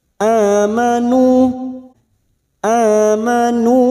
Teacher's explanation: ini contohnya yang pertama hidup dan yang kedua mati disebut dengan mad badal cabang dari mad thi'i dua harakat kita panjangkan